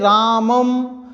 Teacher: अनुस्वारस्य नासिका, यानी नासिका उच्चारण स्थान होती है।